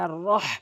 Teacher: অধিকাংশ লোক বলে আর রহ, আর র, মানে এই বড় হওয়ার জায়গাতে ছোট হাইনে সহজভাবেই উচ্চারণ করে দেয়, যার ফলে অর্থ চেঞ্জ হয়ে যায়। বলতে হবে আর রহ, হাটি হলকের মাঝখান থেকে